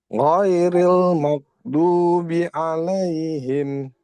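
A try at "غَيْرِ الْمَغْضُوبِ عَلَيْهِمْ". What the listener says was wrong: Jangan mak. Jangan mak. Mer. Masih PR-nya masih di huruf ghain, Pak. Lancarin huruf ghain ya. Latih ya. Huruf ghain.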